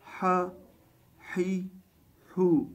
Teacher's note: حا کی آواز جو گلے کے درمیان سے ادا ہوتی ہے تو اس کو بالکل صحیح طرح ادا کرنا ہے، حا حی ہو۔